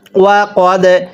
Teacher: এই দালের মধ্যে ধাক্কা দিয়ে পড়ব। দালে যদি সাকিন হয় কলকলা করে পড়তে হয়।